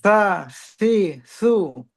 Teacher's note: এইটা দেখেন, ওনার কিন্তু বোঝা যাচ্ছে উনি জিহ্বার আগাকে উপরের দাঁতের আগার সাথে যুক্ত করেছে, এটা বোঝা যাচ্ছে, কারণ হালকা কেমন বাতাসের মতন বের হচ্ছে।